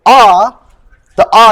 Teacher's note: if you say ah the ah your tongue is like kind of bending downwards into the bottom of your T um bottom of your mouth